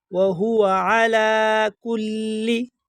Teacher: یہ لفظ لام پر جو کڑا زبر آپ کو نظر آ رہا ہے، اس کو ایک الف کے برابر کھینچا جائے گا